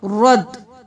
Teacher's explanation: را کے ساتھ دال کو ملانا ہے کیونکہ دال پہ تشدید ہے اور حرکت ہے۔ شین زبر را شر، را زبر دال، رد، شر رد، شرد نہیں کرنا، شر رد۔